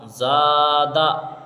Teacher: زادہ میں دیکھیے زا پہ الف مدہ ہوگا اور دال کو جلدی پڑھیں گے کیونکہ دال کے اوپر زبر کی حرکت ہے، لیکن زا میں الف سے پہلے زا کے اوپر دیکھیے زبر کی حرکت ہے اور قاعدہ اوپر یہ بتایا ہے کہ الف سے پہلے زبر ہو تو الف مدہ ہوگا.